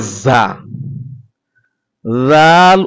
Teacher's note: জাল উচ্চারিত হয় জিহ্বার আগা সামনের উপরের দুই দাঁতের আগার সঙ্গে লাগিয়ে পাতলা করে